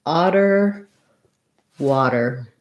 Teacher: think of that t sound as though it were a d and the ah is an open eye so you're going to · the T is a flap because it's between two vowels and it doesn't start a stressed syllable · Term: open ah